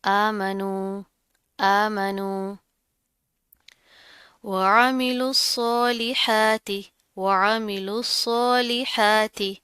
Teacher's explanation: सौत के ऊपर तशदीद है, मजबूती से जमा कर पढ़ेंगे, सौत मोटा पड़ा जाएगा